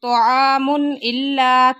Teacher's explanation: تنوین کے بعد حمزہ آ گیا، اظہار ہو رہا ہے۔